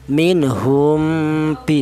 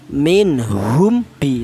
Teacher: Di mana mim mati ini keluarnya huruf berasal dari bibir ya. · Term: ikhfa syafawi